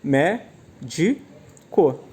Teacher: A tonicidade está no me, né? Na antepenúltima sílaba. Então, nós temos uma palavra proparoxítona.